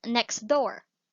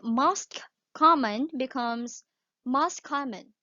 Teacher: The T or the letter T or the sound of T becomes non-existent. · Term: elision